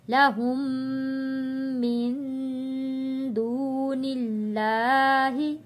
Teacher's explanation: یہاں تشدید ہے اگلے میم کے اوپر تو یہاں غنہ ادا کریں گے.